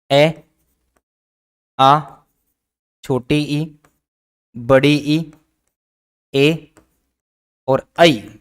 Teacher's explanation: इनका उच्चारण करने पर ओष्ठों का जो आकार है वह गोल सा नहीं होकर ऊपर नीचे या फिर आगे पीछे हो जाता है। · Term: अवृत्ताकार